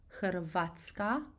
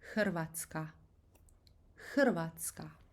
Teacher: I know it's easier to pronounce Hrvatska, putting the emphasis on A, but the way we pronounce this is actually putting the emphasis on that strong rolling R, R, R. Hrvatska.